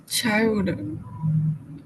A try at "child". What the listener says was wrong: D sound at the end. Child.